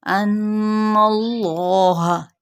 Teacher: और अगर इसमें जलाला यानी अल्लाह का लफ्ज़ आता है तो इसका जो लाम है वो हमने पुर पढ़ना है। उसकी वजह भी क्या होगी पुर करने की, कि ये हमने पीछे ज़बर या पेश को देखना होता है।